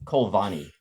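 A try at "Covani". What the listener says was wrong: There's no L in there.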